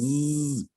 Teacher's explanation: So Z, you can hear the rumbling of the epiglottis. Zzz, that's what you're hearing in the back.